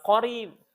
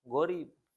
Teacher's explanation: Kalau huruf qaf jadi gha itu pas korib sama gorib tuh beda